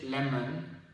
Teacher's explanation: between M and N there's a single sound a very very very short sound